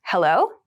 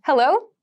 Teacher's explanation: we use hello when we pick up the phone, when we answer the phone, and we usually use a question intonation with this